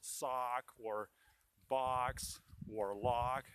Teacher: So the opened ah sound in American English is everywhere where there is a letter O in the closed syllable, where there's in British English the sound ah, like box or sock. In American English, it's the opened ah sound, like in the word father